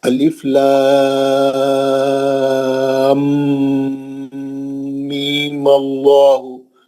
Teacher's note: غنہ کر کے می پڑھنا ہے